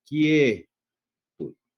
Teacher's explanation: La vocal cerrada se incrementa hacia una vocal abierta y la vocal abierta es la vocal tónica. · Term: diptongo creciente